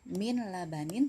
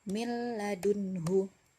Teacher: Bukan min labanin tapi mil labanin. Nah, jadi langsung masuk ke huruf lam tanpa gunnah. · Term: idgham bila gunnah